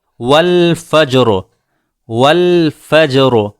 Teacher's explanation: را ساکن ہے، اس سے پہلے جیم بھی ساکن ہے، فا کے اوپر زبر ہے جس کی وجہ سے ہم نے را کو پر کیا ہے